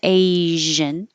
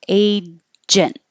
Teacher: I really tried to exaggerate the zh because you need to keep your airflow for this one.